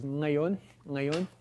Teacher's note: So it starts with a velar nasal.